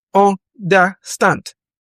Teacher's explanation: Understand has stress on the final syllable.